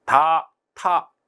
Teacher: 혀끝이 윗잇몸 쪽에 가서 붙어요. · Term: 혀끝 소리